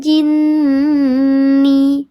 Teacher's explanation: dibacanya dia didengungkan lebih utama tiga harakat daripada dua harakat ya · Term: ghunah musyadadah